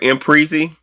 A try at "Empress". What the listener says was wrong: Empress. It's not Empressy. It's straight up Empress.